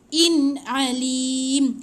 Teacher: Bila jelas, dia tak ada dengung dan jangan tahan lama. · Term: izhar